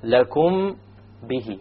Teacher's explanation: You have a meme followed by a ba. You make the ikhfa and you have a ghunna. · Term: ikhfaa shafawi